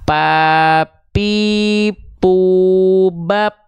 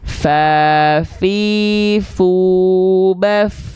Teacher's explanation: dia mengalir nafasnya jangan sampai seperti huruf P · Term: huruf fa